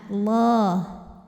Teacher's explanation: lam pada lafaz Allah dibunyikan secara tafkhim karena huruf sebelumnya berbaris fathah, maka dibacanya ditebalkan